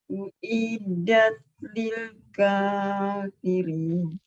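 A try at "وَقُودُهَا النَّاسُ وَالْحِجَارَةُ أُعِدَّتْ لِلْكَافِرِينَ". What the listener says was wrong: Tolong uiddat. Iya, jadi ada huruf dal yang bertasdid, Ibu tekan.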